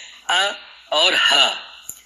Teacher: حمزہ کہیں تو حمزہ میں ہا موجود ہے، اور حمزہ کو پریکٹیکلی پڑھ کر کے کہیں آ تو وہ آ موجود ہے وہاں پہ، تو یہ دونوں جو ہے وہ حلق کے آخری حصے سے نکلتے ہیں یہ دونوں حروف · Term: آخری حلق